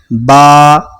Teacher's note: इसका मखरज क्या है कि दोनों होंठ का जो गीला वाला हिस्सा है, यानी अंदर वाला हिस्सा, ये दोनों आपस में टकराता है, फिर ये वाला हरफ अदा होता है।